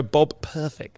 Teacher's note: that double plosive in the middle. You really need to make an effort to climb over the P. You know, you've got to go Bob Perfect.